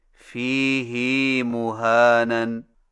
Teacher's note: فیہ مہانن میں فیہ کی ہا کو کچھ کھینچ کر پڑھیں